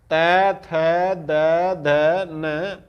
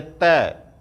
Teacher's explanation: यानी कि जो आपकी जीवा है वो दांत से टकरा करके उच्चारण निकालती है, तो जो दांत से टकरा करके निकलते हैं इसलिए इसको दंत कहते हैं, दंत वर्ण।